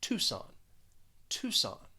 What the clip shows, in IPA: ˈtu sɒn